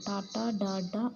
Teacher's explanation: మూర్ధన్యములు నాలుక కొనభాగం చేత పలుకబడతాయి